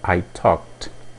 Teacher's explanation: Mais uma vez o verbo termina em K, então a pronúncia é T.